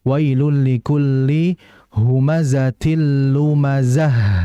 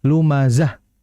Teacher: Namun kalau kita berhenti ya menjadi ha ya. Maka dalam membaca H-nya harus dialirkan ya dengan desisan.